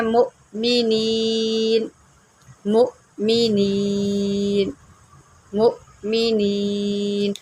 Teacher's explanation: حمزہ ساکنہ ہو تو اس کو جھٹکے کے ساتھ پڑھتے ہیں